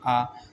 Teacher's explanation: मुख का पूरा खुला होना जैसे आप आ बोलिए आ तो मुख पूरा खुल जाता है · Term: विवृत स्वर